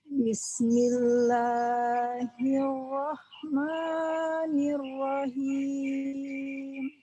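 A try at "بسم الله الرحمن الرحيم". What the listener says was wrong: Bismillahnya kepanjangan?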